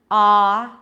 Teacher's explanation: battlefield battle okay battle versus bottle bottles the odds and father drop your jaw pull the tongue back ah right it creates a lot of dark sound in the back